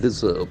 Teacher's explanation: Deserve, the accent falls in the second syllable.